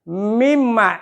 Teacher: Wa mimma, gitu ya. Mimma, di atas mim ada tasdid. Itu harus dibacanya dengung.